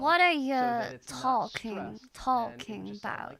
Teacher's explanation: in this sentence I'm reducing you to Y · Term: reductions